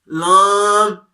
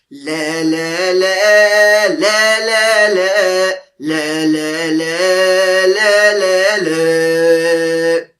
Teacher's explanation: ناک میں آواز لے کر نہیں جانی بلکہ منہ سے آواز نکلنی چاہیے